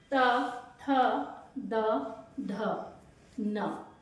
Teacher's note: उसके बाद चलिए त थ द ढ न जब भी आप इन्हें बोल रहे हैं तो आपकी जीभ जाकर दांतो को स्पर्श कर रही है